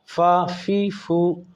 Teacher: सिर्फ फ़ा के लिए नीचे ऊपर वाले दांत और नीचे वाला होंठ ये इस्तेमाल होगा, बाकी दोनों होठों से।